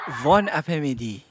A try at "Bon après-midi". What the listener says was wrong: Yeah, it's just, it's bon, not von. Yeah, bon. Bon après-midi.